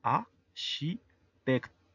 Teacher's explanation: La última E, por estar al final y no estar acentuada, es muda